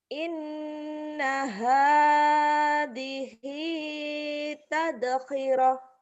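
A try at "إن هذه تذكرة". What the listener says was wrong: inna hadhihi zalnya tuh belum mantep. Tazkirah. Iya, inna hadhihi tazkirah.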